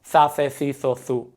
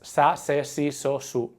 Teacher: this th sound is only used in some parts of Spain